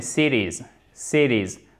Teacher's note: le T, lorsqu'il est coincé, si vous me permettez l'expression entre 2 voyelles, exactement, il se prononce presque comme un de. Ce n'est pas cities en American English, mais cities.